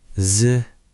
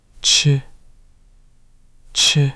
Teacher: z has no puff and ch has a big puff